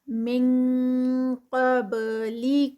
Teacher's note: اخفا انزل من، یہاں پر نون ساکنہ اور آگے قاف آ گیا ہے یہ ہیوی والا، تو اس لیے ہم اس کو اخفا کریں گے اور ساتھ میں ہم اس کو ساؤنڈ دیں گے آئی این جی والی، انگ کی ساؤنڈ آئے گی